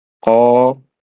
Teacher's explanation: nah itu mad thabi'i ya, wajib dua harakat atau dua ketukan